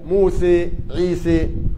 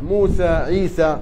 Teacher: وآخرون يقرأوا بالإمالة موسى عيسى، وآخرون يقرؤون بالفتح موسى عيسى